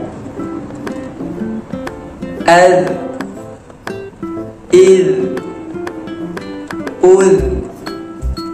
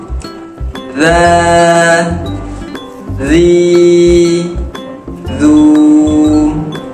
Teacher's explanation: Cara menyebut huruf zal iaitu hujung lidah kita bertemu dengan hujung gigi kacip atas, ataupun hujung lidah kita kena keluarkan sedikit di antara gigi atas dan juga gigi bawah